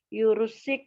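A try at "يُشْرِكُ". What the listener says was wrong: Shin dulu baru ro. Shin dulu baru ro. Yushriku.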